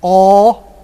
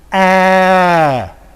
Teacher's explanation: the back vowel Cardinal number five would be a and a with rounded lips